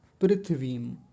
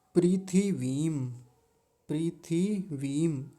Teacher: थ पर छोटी इ की मात्रा है। छोटी इ की मात्रा जल्दी बोली जाएगी और व पर बड़ी ई की मात्रा है। बड़ी ई की मात्रा थोड़ा लंबी खींच कर बोली जाती है।